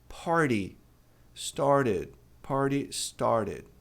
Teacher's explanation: quando a gente tem um R antes do T e um som de vogal, ou vogal em si, depois a gente também tem esse fenômeno do T virando re.